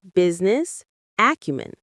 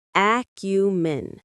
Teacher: The stress on acumen is on the first syllable.